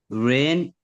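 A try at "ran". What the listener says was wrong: रन, रेन क्यों है? RAIN लिखा है, रेन। रन, रैन, रन, रैन, रन।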